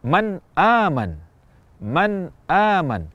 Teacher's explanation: kita ucapkan Nun dengan jelas tanpa tambahan kadar gunah dan juga tidak ditahan dalam waktu yang lama atau kadang sebagian orang memantulkan bunyi Nun atau tanwinnya Padahal tidak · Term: izhar